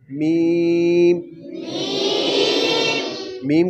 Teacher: अगर हमने इसको दबा दिया तो बा वाली जगह पे आ जाएगा, इसलिए जब मीम को पढ़ना है तो सिर्फ होंठों को आपस में मिलाना है। मीम मीम कहाँ से अदा होता है? हाँ, दोनों होंठों के बाहर वाले हिस्से को मिलाने से।